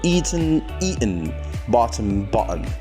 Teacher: in american english the sound gets glottalized whenever it is followed by syllabic nasal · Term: glottalization